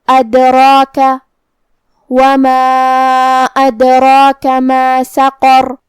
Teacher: ادراک حرف الراء کی حرکت ہے زبر، تو را کا حکم ہے تفخیم، اور جو کہ اس پہ کھڑا زبر ہے تو یہاں مد الف ہوا، اور مد الف اپنے پیچھے والے حرف کا حکم لیتا ہے تفخیم میں اور ترقیق میں، تو ہم را کو اور مد الف کو دونوں کو بھاری آواز میں پڑھیں گے